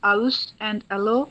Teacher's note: Another social marker is ha sound dropping, which results in aus and alo in contemporary English.